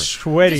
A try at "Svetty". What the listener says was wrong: It's SV.